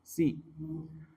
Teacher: sin ya, ujung lidah dengan di bawah gigi seri bawah,